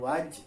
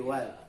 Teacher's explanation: Wad tipis ya, bukan waj tapi wad.